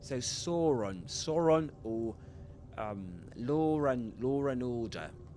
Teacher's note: in received pronunciation and on in standard Southern British English, you'll hear a ra, small ra, called technically as intrusive ra.